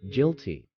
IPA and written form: ˈɡɪlti (guilty)